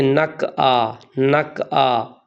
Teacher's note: قاف کو کاف باریک کاف بنا دیتے ہیں اور عین کو حمزہ کر دیتے ہیں